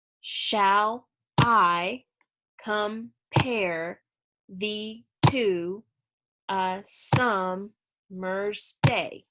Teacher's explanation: So it's unstressed, stressed, unstressed, stressed, unstressed, stressed. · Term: iambic pentameter